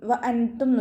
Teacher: നൂൻ സാക്കിനയെ മറച്ചു വെച്ചിട്ട് മണിച്ചോതി കൊടുക്കുക. നൂനിൻ്റെ സൗണ്ടിനെ വ്യക്തമായിട്ട് കേൾപ്പിക്കരുത്.